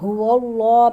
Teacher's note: یہاں هو اللہ پہ اللہ تعالیٰ کے نام کو موٹا کر کے پڑھیں گے کیونکہ اللہ تعالیٰ کے نام سے پہلے زبر ہے